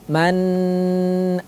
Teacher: dalamnya ada hukum izhar tidak boleh dibaca dengung bagaimana maksudnya ya Membaca izhar tapi dengan dengung contoh manana ditahan terlalu lama pada bagian nunnya